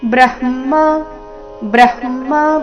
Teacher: ಬ್ರಹ್ಮ ಬ್ರ ನಂತರ ಅರ್ಧ ಹ, ನಂತರ ಪೂರ್ತಿ ಮ ಬರಬೇಕು.